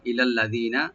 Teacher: আল্লাযীনা লামটাকে ওপেন রেখে জালটাকে একাল টানবেন, নুনে কোনো টান হবে না